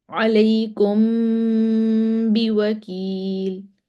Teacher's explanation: ناک سے آواز نکلے گی، ہونٹ بند ہوں گے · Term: اخفا شفوی